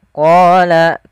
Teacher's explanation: Dari mana makhraj daripada huruf qaf, yaitu pangkal lidah kita menempel dengan langit-langit atas